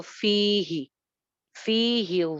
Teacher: فی ایک الف لمبا جبکہ ہا اس کے آدھا